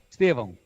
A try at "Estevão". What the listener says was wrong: Olha lá, parece N. Parece Estevão. Mas é A-O. CH estava correto.